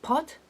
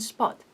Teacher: We have pot with aspirated p and spot with non-aspirated p